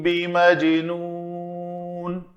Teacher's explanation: وَمَا صَاحِبُكُمْ بِمَجْنُونَ، دو کام کیے، میم ساکن کے بعد با ہے تو اخفاء شفوی، اور جیم قطب و جدن میں سے ہے تو قلقلہ کیا